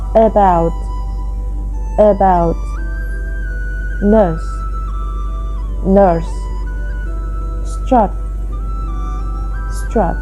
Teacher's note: There is also a class of vowels between front and back. These are known as central vowels and involve a raising of the body of the tongue towards the area where the hard and soft palate join.